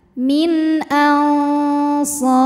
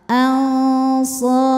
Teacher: Ketika berhenti, ra-nya ini disukunkan dan dibaca secara tafkhim. Kenapa? Karena huruf sebelumnya sukun juga alif ya, dan huruf sebelumnya lagi berharokat fathah.